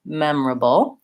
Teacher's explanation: there's my dark L at the end, which has kind of a little schwa before it, an sound, or almost no vowel, memorable.